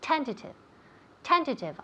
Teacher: Now pay attention to where we put the emphasis. It's on the first syllable.